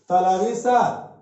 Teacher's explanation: तलवी सा इसको तालु से बोलते हैं